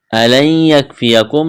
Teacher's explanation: نون ساکن کے بعد یا ہے، یہاں پر ادغام کریں گے، غنہ کریں گے